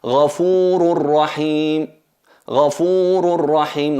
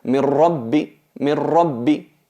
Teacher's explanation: Notáis que aquí no hay ni nun ni nasalización. Es totalmente fusionada en la ra. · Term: idgham bi ghayri gunna